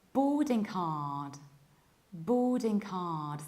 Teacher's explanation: we prolong O and we skip middle R. Boarding, and there is no K at the end. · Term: British accents